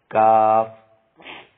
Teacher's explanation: چھوٹا کاف زبان کی جڑ اور تالو کے سخت حصے سے ادا ہوتا ہے